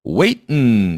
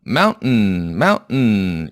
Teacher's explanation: waitin 이런 느낌으로 발음했습니다. 성문 폐쇄음 발음으로 발음을 했어요.